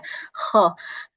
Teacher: huruf kho itu ada seperti serak-seraknya seperti itu, seperti ngorok-ngoroknya ya, agak kotor sedikit gitu ya.